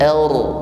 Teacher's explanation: huruf ra yang bersukun sebelumnya ada fathah, maka ra-nya dibaca takrir bergetar, namun getarannya ini harus tafkhim, tebal, bukan ar, ar tipis, namun ar.